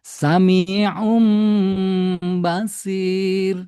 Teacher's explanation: nunnya berubah menjadi mim di sini ya dan langsung digunakan dua harokat